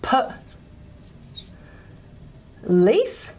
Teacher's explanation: think of is a word like police so per lease and what we do is we just put a little stress there to show that the lease is a stressed syllable